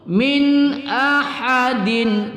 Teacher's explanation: nun sukun bertemu Hamzah kita baca tidak berdengung pada izhar halqi